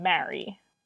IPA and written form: mæɹi (marry)